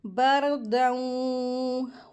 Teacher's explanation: تنوین کے بعد واو آیا ہے، ادغام ہوگا اور غنہ کر کے پڑھیں گے